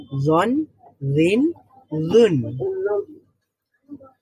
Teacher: জিহ্বার আগার সামনের উপরে দুই দাঁতের আগার সাথে লেগে জ উচ্চারিত হয় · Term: জ এর মাখরাজটা